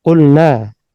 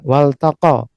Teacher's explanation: lam yang masuk pada fi'il ini maka semuanya terbaca dengan jelas ya